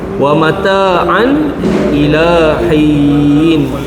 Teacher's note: Tanwin bertemu dengan Hamzah ya. Okey. Jelas dan nyata. Izhar halqi.